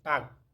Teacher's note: গে যখন জার্মান শব্দের শেষে বসে তখন এটি বাংলা কয়ের মতো উচ্চারিত হয়ে থাকে